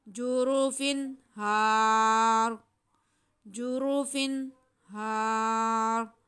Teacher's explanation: यहाँ पे रा के नीचे ज़ेर है, अगर वक्फ नहीं करेंगे तो रा बारीक होगा, अगर वक्फ करेंगे रा साकिन हो जाएगा, उससे पहले हरफ ज़बर है तो रा को मोटा पढ़ेंगे